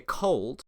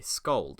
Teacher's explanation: When you say cold, at least as a native speaker, you'll feel the burst of air in your hand, which you won't when you say scold. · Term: aspirated